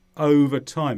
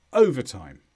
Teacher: when the words are together I do overtime the stress goes at the beginning